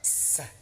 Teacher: Bi ketemu sa desisnya seperti desis ular.